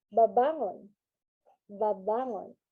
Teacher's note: So if you can see the first syllable, which is ba, it is in a normal tune, and then at the second syllable, it has a falling intonation